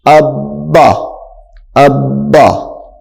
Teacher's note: ایک مرتبہ پہلے سے مل کر دوسری مرتبہ خود تشدید والے حرف سے مل کر پڑھا جائے گا. تشدید والے حرف کو رک کر پڑھنا ہے.